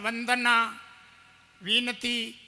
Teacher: एक व अक्षर है आपके नीचे वाले होठ दांत से टकराएगा